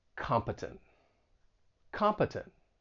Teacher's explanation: the stress is on that first syllable, and the final syllable has that schwa sound